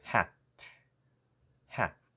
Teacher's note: you don't really pronounce the last sound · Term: stopping sound